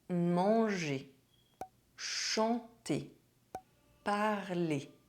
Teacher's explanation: the final R of the infinitive of verbs ending in ER is not pronounced